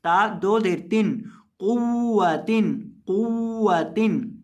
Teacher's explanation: कॉफ पेश वाव कुव, वाव दबर वा कुव्वा, और वाव को पढ़ते वक्त होंठों को गोल करके पढ़ेंगे।